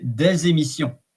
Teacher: you link the consonant with the vowel of the next word. So you say des émissions, and then the S becomes a kind of a Z